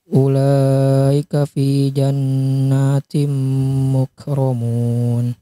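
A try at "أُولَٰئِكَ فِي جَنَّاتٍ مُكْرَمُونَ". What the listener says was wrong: Lebih panjang lagi. Ulaika.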